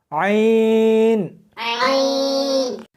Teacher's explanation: اس کو حلق میں سے سختی کے ساتھ نکالنا ہے